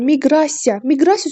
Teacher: Miqrasiya sözündə vurğu ikinci hecaya düşür.